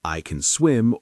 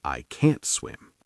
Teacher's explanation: In American English, the a in can is often very soft and quick, almost like kin. But in can't, the a is stronger.